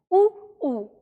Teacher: ऊ का उच्चारण स्थान होता है होठों से, यानी जब हम ऊ का उच्चारण तभी कर पाते हैं जब हम अपने होठों से हवा को रोकते हैं, ठीक है, ऊ, और इसमें हम होठों का प्रयोग करते हैं।